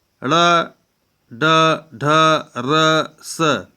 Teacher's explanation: मूर्धन्य व्यंजन जो है इसका मूल स्थान मूर्धा है